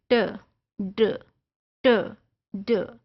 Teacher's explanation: contacts the alveolar ridge, the gums just behind the teeth, as in t, d, n और ल। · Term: एल्वियोलर